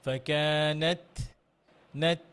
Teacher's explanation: তায়ের হামস করতে হবে, ফাকানাত লিমা, ফাকানাত, নাত, বাতাস বের করতে হবে হালকা করে, হ্যাঁ।